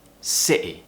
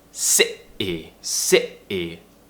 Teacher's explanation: What we're doing is we're creating some tension in our throat, and we're cutting off the sound before the T. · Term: glottal T